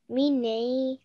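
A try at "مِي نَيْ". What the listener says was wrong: Make the nei a little bit longer because we have a ya lean here.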